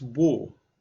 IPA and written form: wɔːr (wore)